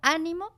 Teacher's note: lleva el acento en la primera sílaba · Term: esdrújulas